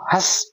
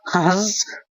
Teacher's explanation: हस बोल रहा हूं तो पूरी हवा मुंह से आई है